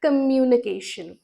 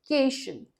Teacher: Communication. और stress आ रहा है cation पे.